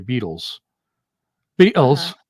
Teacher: The T is a glottal stop.